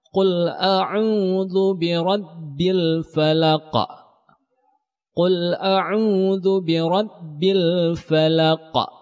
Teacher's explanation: Qalqalah ini pantulannya besar karena dia berada di akhir kata. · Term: qalqalah kubra